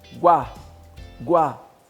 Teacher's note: Quando a gente chega no Guá, o U não é pronunciado direito. A gente fala o U com som mais fraco, mais baixo. Guá, Guá. O A é claro, o U não.